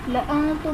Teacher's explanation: لَأَنْتُمْ میں نون ساکن ہے، اس کے بعد حروف اخفا میں سے تا آ رہا ہے، تو یہاں پر غنہ کریں گے، اخفا کا قاعدہ ہوگا۔